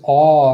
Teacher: for this ah sound the tongue is being pulled back